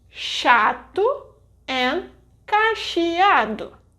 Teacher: the dígrafo CH will have the sh sound, as in chato and cacheado